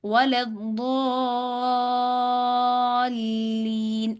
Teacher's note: لام بالکل باریک پڑا جائے گا